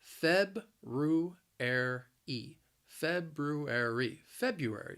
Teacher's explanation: the word has four syllables the stress is on that first syllable